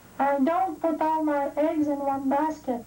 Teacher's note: prononce le T à la fin du mot don't